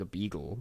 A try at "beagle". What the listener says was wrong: A beagle? It sounds like you're saying beetle.